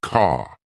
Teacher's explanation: Words like car sound like car. British accent tends to soften the R, so car sounds more like ka